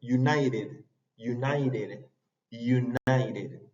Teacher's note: Sí, united sería como un poco más parecido al acento británico, que conservan el sonido de ch, pero como vimos anteriormente, si tú tienes la T entre vocales, es una R chica, como la nuestra